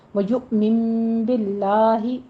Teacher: باللہ میں لفظ جلالہ کو باریک پڑھیں گے